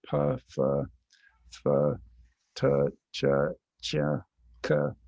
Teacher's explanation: And so now if you have somebody say words or sounds, syllables in response to an auditory cue that start at the front of the mouth, so pa, fa, fa, ta, cha, cha, ka, you can see that the place of articulation is moving backwards